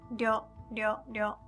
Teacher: Japanese R sound is closer to the sound D. So if you can't pronounce Ryo, you can just say Ryo, Ryo, Ryo, which is like D-Y-O, Ryo.